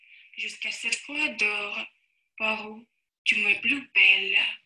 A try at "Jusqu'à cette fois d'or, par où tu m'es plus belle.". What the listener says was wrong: Voilà, то есть ощущение такое, что нет вот этой плавности.